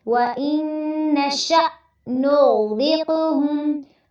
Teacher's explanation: غین پہ تھوڑا سا ٹائم دینا ہے اور اس کو پر بھی کرنا ہے، را کو باریک رکھنا ہے، جبکہ آپ قاف کی ساکن کو پڑھیں گے تو آپ نے اس کو پر بھی کرنا ہے اور قلقلہ بھی کرنا ہے۔